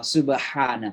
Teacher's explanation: Ha ain sama tempat keluarnya tenggorokan tengah ya.